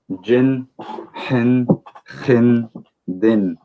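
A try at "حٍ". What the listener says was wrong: The ha, we want it a little bit stronger. So we're going to say hin.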